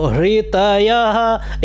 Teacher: हकार जो है महाप्राण है, तो आपको बाहर की तरफ श्वास छोड़ते हुए री का उच्चारण करना है